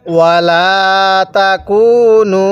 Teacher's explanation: এই নুনের মধ্যে 3 আলিফ অবশ্যই টান দিবেন।